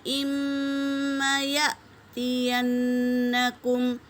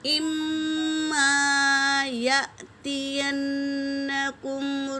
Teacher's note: حمزہ ساکنہ ہے، جھٹکا دیں گے، نون پر تشدید ہے، غنہ کریں گے